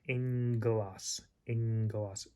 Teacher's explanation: the first one becomes more of an N sound, and then the second one still has the G sound, so you got ng.